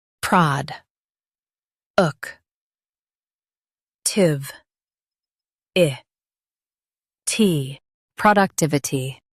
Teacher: Stress tiv and keep i soft.